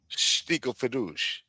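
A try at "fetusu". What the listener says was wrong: Fadus with an U. Say U at the end.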